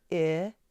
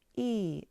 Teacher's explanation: I is made with the tongue more relaxed, lower in the mouth, but E is slightly higher.